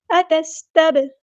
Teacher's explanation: زبر کو لمبا نہیں کرنا، قاف ہمارا ہیوی لیٹر ہے، اتستب، سین ساکن کو یہاں ہلانا نہیں ہے اور سین کی سیٹی واضح ادا کرنی ہے ، اتس نہیں کرنا، اتستب، با ساکن کو ہلانا ہے، کلکلا